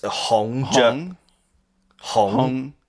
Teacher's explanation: It's a mid-rising tone, so it's Hong.